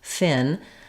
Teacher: So when I'm saying fin, what you should feel is that restriction of air is between the lip and the teeth.